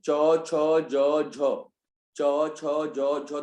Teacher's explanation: चौ बोलो, चौ बोलो पहले, चौ छ जौ झ, चौ छ जौ झ, तो आपकी जीभ तालु को पूर्णतः स्पर्श कर रही है, पूरी तरह से लग रही है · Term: तालव्य